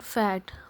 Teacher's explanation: in pronouncing the word fat we feel no vibration so it is called a voiceless consonant